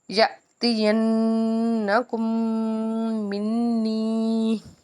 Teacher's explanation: تو کاف کو ہم نے میم کے ساتھ ملایا اور کیونکہ میم مشدد ہے اس کے بعد نون مشدد ہے تو ہم ان دونوں پہ غنہ کریں گے